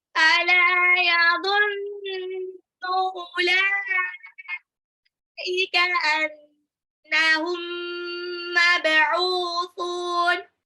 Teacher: yadhunnu nunnya gunnah harus ditahan